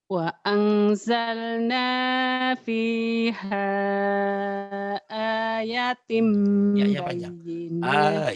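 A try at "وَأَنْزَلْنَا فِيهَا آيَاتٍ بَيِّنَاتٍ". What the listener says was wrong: Ya panjang. Ya-nya juga panjang.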